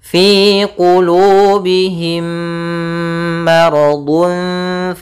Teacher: Yaitu adanya mim mati bertemu mim. Caranya adalah kita memasukkan mim yang pertama kepada yang kedua dan ditahan suaranya. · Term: Idgham Mimi, idgham mimi